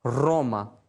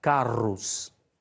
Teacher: O R, né, é sempre vibrante